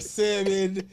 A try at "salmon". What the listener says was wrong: It's a lot of people that's gonna stop listening to our pod if y'all niggas keep pronouncing salmon with an L. Salmon.